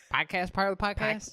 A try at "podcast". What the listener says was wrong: Podcast? Podcast? Sounds like you have an extra A in there somewhere.